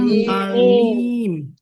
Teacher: huruf mim itu antara bibir atas dan bibir bawah itu ditutupnya tuh ringan sekali.